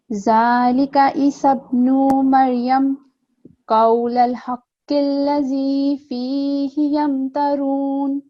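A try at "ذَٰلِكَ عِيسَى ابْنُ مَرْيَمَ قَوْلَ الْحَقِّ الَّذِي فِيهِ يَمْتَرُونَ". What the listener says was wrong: جی عین کی آواز یہاں پہ ذرا کلیئر ہونی چاہیے.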